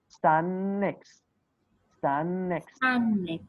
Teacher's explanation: Before te and de and after te and de, we have the same sound. So we will not pronounce them.